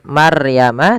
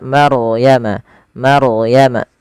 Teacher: Kemudian pelafal maryama di sini ada bacaan ro tafkhim yang di mana rnya wajib kita bukan wajib rnya dibaca dengan tebal